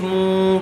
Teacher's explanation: پیش والے حرف کے بعد واو ساکن آیا ہوا ہے، واو مدہ ہوگا، اس لیے تھوڑا کھینچ کر پڑھیں گے